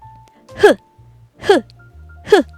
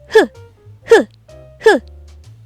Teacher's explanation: 입안에 어디에도 닿지 않게 입만 살짝 벌리고 목구멍에 힘을 주면서 내뱉어요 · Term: 히읗